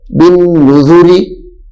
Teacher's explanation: کیونکہ را کے نیچے اپنی حرکت موجود ہے، را کے نیچے اپنی حرکت موجود ہے، زیر، جس کی وجہ سے را باریک ہو گئی ہے۔ بن نذوری، بن نذوری نہیں پڑھیں گے، بن نذوری، یہاں پہ را باریک ہو گئی۔